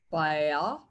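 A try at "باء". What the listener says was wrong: Why is it bayan? Why not ba'a? Ba'a.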